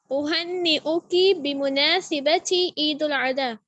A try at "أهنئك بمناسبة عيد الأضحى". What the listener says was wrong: ایک اور بات، اوہنی او کی بمناسبتی، سین کو زبر دیں، دوبارہ بولیں، عید الاضحیٰ، اضحیٰ ضاد ہے، حمزہ ہے، ضاد ہے، حا ہے، بمناسبت عید الاضحیٰ، اس طرح کر کے اضحیٰ، دوبارہ بولیں، اوہنی او کی، عین بھی آپ نے نکالنی ہے، حلق سے عین بھی نکالنا ہے، عید الاضحیٰ.